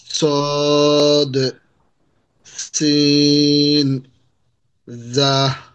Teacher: 12 নম্বর মাখরাজ জিহ্বার আগা সামনের নিচের দুই দাঁতের পেট ও আগার সঙ্গে লাগাইয়া